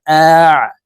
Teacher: আইন হরফকে হালুকের মধ্যখান থেকে চাপ দিয়ে উচ্চারণ করতে হবে কারণ আইনের মাখরাজ হালুকের মধ্যখান থেকে হবে হামজাহ আইন জবর আ